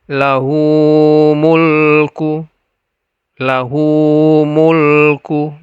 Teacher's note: lahu hu dibaca Dua harakat karena sebelum Hu itu ada la ya berbaris fathah kemudian mulku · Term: Mad Silah qasirah, mad silah qasirah